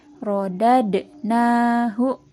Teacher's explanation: di sini ada huruf dal yang mendapatkan harkat sukun, maka dibacanya harus dipantulkan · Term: bacaan qalqalah